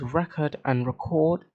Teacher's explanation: cord gets reduced to cud, at least in my accent, for record and record